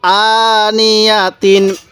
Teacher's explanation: হামজা এর উপর খারা জবর এজন্য আমি এক আলিফ টান দিছি